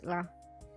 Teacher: the r sounds in Japanese don't really have a hot R sound so it's more like it's closer to an L so it's ra like R but but not like super hot